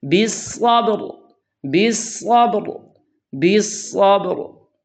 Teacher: बा को मोटा नहीं करना और रा को बारीक नहीं करना, रा को भी पुर पढ़ना है